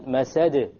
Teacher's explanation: So there's a slight more emphasis on the masad because it's at the end of a word. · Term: qalqala